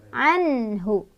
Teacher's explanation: Ini ada izhar karena nun sukun bertemu dengan huruf izhar yaitu ha. Cara bacanya nunnya dibaca jelas.